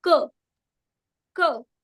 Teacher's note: So the back of the tongue is the active articulator. The back of the tongue and the soft pallet is the passive articulator.